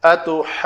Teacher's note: تو یہ پڑھیں گے ہم اتحاجونی. جیم کی تشدید کو بھی ظاہر کرنا ہے، نون کی تشدید کو ظاہر کرنا ہے. مد لازم کی لمبائی جو ہے والضالین کی طرح 5 اور 6 حرکات کے برابر. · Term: مد لازم کلمی مثقل